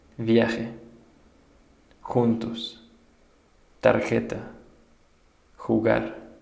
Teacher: Pronounced like the raspy sound of G, similar to the H sound in hot.